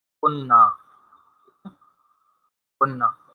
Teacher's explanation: پھر یہ جو دو دو نون آ رہے ہیں ان دونوں نون کو ہم مرج کر دیں گے، اس کا ادغام کر دیں گے، تو یہ بن جائے گا کننا، کننا۔